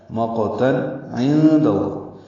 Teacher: تنوین کے بعد عین آنے کی وجہ سے اظہار ہے